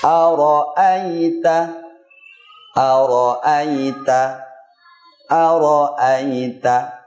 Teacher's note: Dengan konsentrasi kita mengucapkan huruf hamzah dari tenggorokan bawah dengan nafas tertahan, suara tertahan, lidah turun, tidak menempel ke langit-langit atas dan tidak cepat dalam mengucapkannya